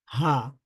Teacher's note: শুধুমাত্র কণ্ঠনালীর শুরু থেকেই উচ্চারিত হয়ে যায় আমরা হা বলতে পারি কণ্ঠনালীর শুরু থেকে এটার মাখরাজ বা প্লেস